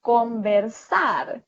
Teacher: siempre al final se va para arriba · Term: palabras agudas